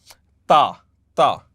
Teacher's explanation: ता बोलने के लिए माई tip of the tongue should touch the back of my incisors, ये पीछे वाली इंसाइजर्स को टच करेगी तो तब ये वर्ड प्रोनाउंस होगा।